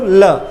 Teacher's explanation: जिह्वा ने अवरोध उत्पन्न किया बीच में, मध्य में, और वायु कहाँ से? दोनों ही बगलों से बाहर प्रवाहित हो जाती है। तो ये होता है आपका पार्श्विक व्यंजन और इसे हम कहते हैं ल को।